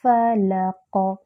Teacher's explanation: فلق، قاف پر جو ہے وہ قلقلہ ہوگا یعنی آواز پلٹ کر آئے گی، اور قاف کا مخرج ہوتا ہے اقصی اللسان، جب لحاظ کو لگے تو قاف ادا ہوتا ہے، یعنی زبان کی جڑ جب نرم تالو سے لگتی ہے تو قاف ادا ہوتا ہے